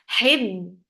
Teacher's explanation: the sound will be very much trapped because ba is very shadid letter, very strong letter. Hib, and then ba, 4 counts long.